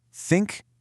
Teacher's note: For think, your tongue is placed right between your front teeth, blowing air.